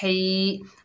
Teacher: हा के नीचे ज़ेर, आगे या साकिन, ये या मद्दा है, एक अलिफ की मिकदार खींच कर पढ़ेंगे ही। हा को हलक से अदा करना है ही।